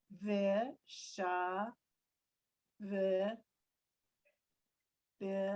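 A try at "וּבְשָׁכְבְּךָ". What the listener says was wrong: no, after the sha is a ch. word is uv, shach, bicha.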